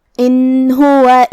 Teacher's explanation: اظہار کا معنی ہے ظاہر کرنا، تو ہم نون کو ظاہر کریں گے اور بغیر غنہ سے یہ حکم کو ادا کریں گے